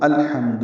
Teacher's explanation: حمزہ کو لام سے ملائیں گے، لام ساکن ہے، اس میں اظہار ہے، اظہار قمری، کیونکہ ہا حروف قمری میں سے ہے۔ لام کو واضح کر کے پڑھنا ہے، الو نہیں پڑھنا، لام پہ قلقلہ نہ ہو، لام کو ہلانا نہیں ہے، الو ہمو دو یہ غلط ہے۔